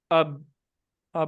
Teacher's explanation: ایک شروع میں نکلتی ہے جب ہونٹ جڑتے ہیں، اب، اب ہونٹ جڑ کے آواز بند ہو گئی